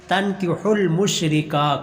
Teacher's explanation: کاف کو لمبا کرنا ہے کیونکہ کاف کے اوپر کھڑی زبر ہے